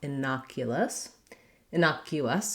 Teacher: innocuous has second syllable stress that means that the n o the na syllable is stressed and that letter o says the vowel ah so thinking about · because my first syllable is unstressed, it's just like a short, light, and reduced lax I vowel